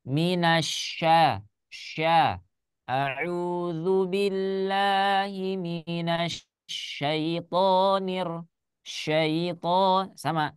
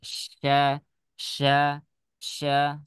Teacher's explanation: huruf syin itu ada di tengah lidah ya jadi ketika kita mengucapkan huruf syin ya tidak ada hubungannya dengan apa dengan bibir